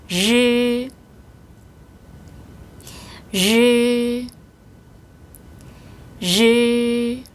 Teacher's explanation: 혀와 천장 사이에 공간이 생기면서 바람이 들락날락 하는데요. 진동이 약간 일어납니다.